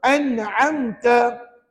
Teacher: Dibaca dengan nyata terang jelas tanpa dengung. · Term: izhar halqi